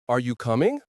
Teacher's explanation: a question like, Are you coming? rises at the end. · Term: intonation